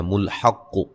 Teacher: حا کو قاف سے سختی سے ملائیں گے، قاف کو موٹا ادا کریں گے. وقفن قاف کو خوب ہلا کے پڑھیں گے، ٹھیک ہے.